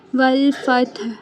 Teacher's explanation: ہا حلق کے درمیان سے ادا ہوگا۔ ہا کی آواز واضح رکھنی ہے، پتہ چلنا چاہیے کہ ہم وقف کر رہے ہیں تو آخر میں ہا کے ساؤنڈ نکال رہے ہیں، ٹھیک ہے۔